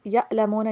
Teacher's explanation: اولا یعلمون، واو کو W sound کے پر، اولا یعلمون، عین کی جگہ آپ نے حمزہ والی آواز نہیں دینی